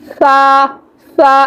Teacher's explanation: ہم زبان کی جو سرہ ہے یہ والا، ہم اس کو دانتوں کے پیچھے لگائیں گے ایسے، سا سا، اس میں سیٹی نہیں آئے گی، ٹھیک ہے؟ بغیر سیٹی والا یہ حرف ہے، تو ہم اس میں سیٹی نہیں نکالیں گے، تو سیٹی نہیں آنی چاہیے۔